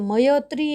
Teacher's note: મૈત્રી બોલીએ ને તો આપણને ખબર પડે કે આપણે તો મયત્રી એવું કંઈક બોલ્યા